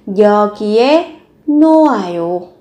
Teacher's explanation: Âm hờ này được coi là âm câm, các bạn không nối lên để phát âm.